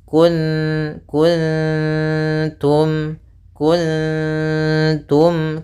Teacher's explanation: suara ee nunnya disamarkan ke ta langsung. ta makhrajnya adalah tadi ya di antara gusi dan gigi ya atau di gusi atas gitu ya. · Kemudian mim mati bertemu dengan ta yaitu izhar syafawi. Harus jelas mimnya.